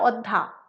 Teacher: পদের শেষে অন্তস্থীয় ও হ লোপ পেয়ে যাচ্ছে। যেমন অধ্যায়, এই শব্দটিতে দেখা যাচ্ছে যে অন্তস্থীয়টা লোপ পেয়ে হয়ে গেল অধ্যা।